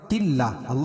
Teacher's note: اللہ کا لام باریک پڑھا جائے گا